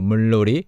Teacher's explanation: the second consonant, no, becomes lo, because of the previous consonant, which is 리을